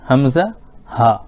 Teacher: یہ حمزہ اور ہا جو ہے شروع والے حلق سے ادا ہوتا ہے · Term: شروع حلق